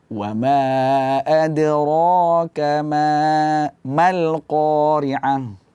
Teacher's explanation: ra itu huruf sifatnya tebal di sini karena dia berbaris atas, maka kita baca tebal.